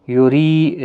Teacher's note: ری یا مدہ ہے، 1 الف کی مقدار کے برابر کھینچ کر پڑھیں گے،